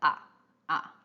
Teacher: in normal speech, the full third tone always, most of the time, it sounds like a half third tone